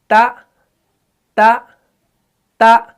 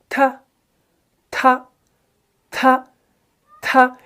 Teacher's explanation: हमारी जुबान जो है ना वो ऊपर लग रही है, यानी सनाया उलिया के जड़ों से लग रही है। तो यहां पर एक जमाव पैदा हो रहा है। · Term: सिफत इस्मात